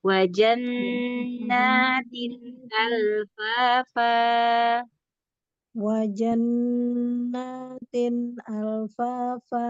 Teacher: ada gunnah di situ, non tasydid ya. Gunnah yang paling sempurna, gunnah akmal.